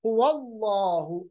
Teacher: लाम को पुर पढ़ेंगे जबर की वजह से